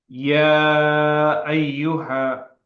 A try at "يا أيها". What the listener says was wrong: This is long. You said ya ayyuha. It should be short.